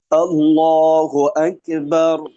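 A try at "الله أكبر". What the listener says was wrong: আচ্ছা, আক, আকে না হয় আক, আক।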